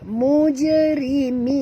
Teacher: Kita berhenti dengan mad arid disukun, dan ra ini jangan tebal ya, kena ra baris bawah, ra tarqiq ya